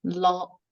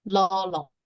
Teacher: the first la can be sounded as la, even tone, and the next one, the laq, is the falling tone